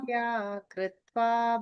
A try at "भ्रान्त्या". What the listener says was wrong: Bhantya, it's Bhranti. Sthanau Purushavad Bhrantya